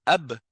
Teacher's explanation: Et là, vous regardez qu'est-ce que vous bougez pour faire produire ce son-là. Et quand vous faites le ab, vous voyez que c'est en collant les deux lèvres.